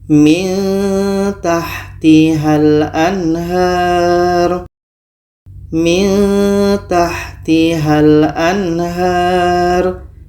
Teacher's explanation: Di sini ada nun mati bertemu ta. Maka di sini kita baca secara ikhfa, secara samar. Oke, dan kita dengungkan. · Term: ikhfa aqrab